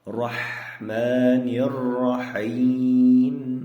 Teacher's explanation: Mana bu joyda o'rtacha ha kelyapti, ya'ni tomoq qirilib ham chiqmaydi, yumshoq ham chiqmaydi. Qanday chiqadi? Tomoq bo'g'ilib chiqadigan ha harfi kelyapti.